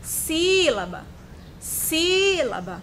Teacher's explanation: Sílaba, si, o si está acentuado, mas eu posso cantar essa palavra, sílaba, sílaba. Percebam como o si foi mais prolongado. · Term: sílaba tônica